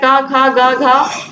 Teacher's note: इनका उच्चारण स्थान कंठ होता है।